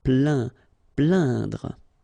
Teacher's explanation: Okay, when you combine this A-I-N, you will get the sound un. So really, this nasal sound in your nose